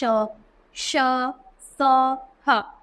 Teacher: फिर अगला है ऊष्म व्यंजन। तो जिन व्यंजनों का उच्चारण करते समय वायु रगड़ खाती है, मुख से बाहर आती है, जिससे गर्मी सी पैदा होती है, उन्हें ऊष्म व्यंजन कहते हैं।